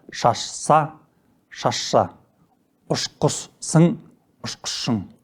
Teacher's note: Түбірдің соңғы дыбысы ш болып, қосымшаның басқа дыбысы с болса, айтуда қосымшаның бұл дыбысы ш дыбысына айналады.